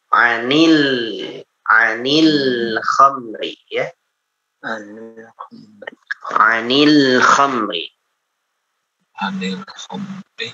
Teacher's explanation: Lamnya qamari, jadi dibaca jelas lamnya ya, dibaca lam mati. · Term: lam qamari